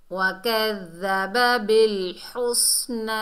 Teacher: वकज़्ज़ब बिल हुस्ना, बा को लाम से मिलाएंगे। हा को हलक के दरमियान से अदा करेंगे और सीन को सख्ती और सीटी से अदा करेंगे